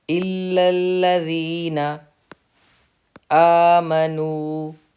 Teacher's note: نو پہ واو مدہ کا قاعدہ ہے، ایک الف کے برابر نو کو ہم نے کھینچ کے پڑھنا ہے